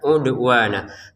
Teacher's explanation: Kata udwan ya dalnya dipantulkan. Udwana wunnya dua harakat, lamnya dua harakat.